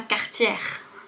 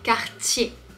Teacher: Quand tu vois ER à la fin, c'est pas le son R, c'est le son E. Quartier. La difficulté, ça peut être le R qui est suivi du T.